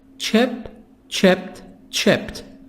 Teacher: The D here is going to be pronounced T. Why? Because the last sound is the sound of P